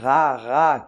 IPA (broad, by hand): ʀa